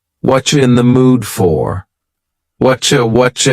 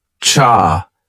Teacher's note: Whatcha is what are you in the mood for? Here, the word you has been reduced to cha.